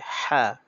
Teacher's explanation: হলকের মাঝখান থেকে উচ্চারণ হবে হা এটা গলা চাপ দিয়ে উচ্চারণ করা লাগবে